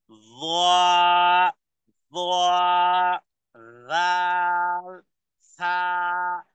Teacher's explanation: জিহ্বার আগা সামনের উপরের দুই দাঁতের আগার সাথে লাগিয়ে য, য, রাল, সা, 3টি হরফ একই জায়গা থেকে উচ্চারণ হয়।